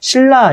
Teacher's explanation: 앞에 있는 리을이 완전히 뒤에 있는 리을과 똑같아졌죠. 그래서 이게 완전히 똑같아졌으니까 완전동화라고 얘기한다.